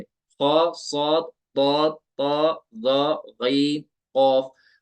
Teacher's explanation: मोटे पढ़े जाते हैं और फुल माउथ के साथ पढ़े जाते हैं। इनको बोलते हैं हुरूफ मुस्तालिया।